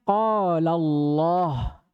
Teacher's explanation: kata beliau lamnya Al pada lafaz Allah itu dibaca tebal